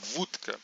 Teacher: A gente percebe que esse D da palavra ele vira um T na hora de pronunciá-la. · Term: assimilação de vozeamento